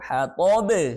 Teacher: hatab ada qalqalah kubra. Ya, pantulannya harus jelas. Itu hatab. Kita baca lagi ya.